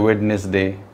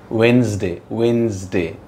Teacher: वेडनेसडे, डी बिल्कुल silent होता है